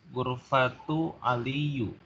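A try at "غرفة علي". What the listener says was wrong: aliyin. Nah, yang kata keduanya kasrah ya. Gurfatu aliyin.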